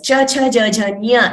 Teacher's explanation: So along with the talu for nya, we use the nasika.